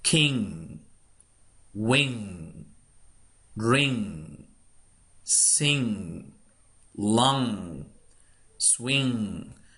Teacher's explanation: It comes partially from the nose and partially from the mouth. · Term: N, G together